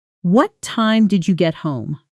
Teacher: Notice how home drops down at the end. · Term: Falling information question